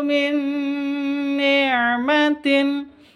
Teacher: Nun mati bertemu dengan nun, cara bacanya langsung masuk ke nun yang kedua. Min disertai dengung 2 ketuk.